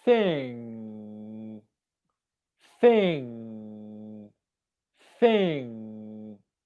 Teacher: And finally, and this is the one that most people struggle with, and I teach this a lot because for that reason, is the sound, which is the NG spelling, it's the back of the tongue coming up and touching the back of the mouth, just like you do for the k and g sounds